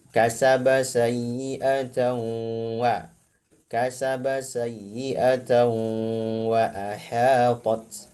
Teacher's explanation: Jadi tanwinnya atau nun sakinah zaidahnya ini harus ada masuk ke khaysyum, rongga hidung. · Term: gunnah